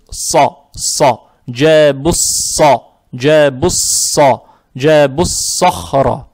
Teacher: Поэтому из-за того, что лям не прочитали, буква сод, она удваивается. Теперь буква «сод» она твердая, фатха приобретает оттенок «о»